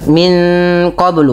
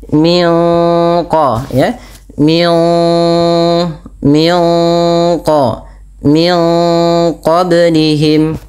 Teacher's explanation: cara membacanya nunnya disamarkan kepada huruf qof. · suara nunnya disamarkan kepada makhraj daripada huruf qaf yang berada di pangkal lidah kita. Kemudian pada lafal qablihim ada bacaan qalqalah yang dimana huruf ba-nya wajib kita pantulkan.